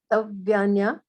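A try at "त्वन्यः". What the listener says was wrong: Tvanyah. Because there is no vowel between T and V. There is no nothing. T. The V comes immediately after T. There is no gap in between.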